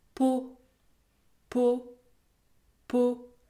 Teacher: Le mot peau se termine par une consonne muette, le T. Dans ce cas, il faut prononcer un O fermé.